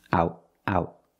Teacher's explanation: you cannot omit the T in the word out it's a stop T out out out you put the tongue up and you stop